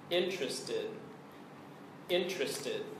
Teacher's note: three syllables and the stress is on the first syllable